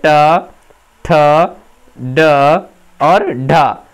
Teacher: यानी पूरा ट वर्ण जो आपका होता है ट, ठ, ड और ढ, ये सभी मूर्धन्य व्यंजन हैं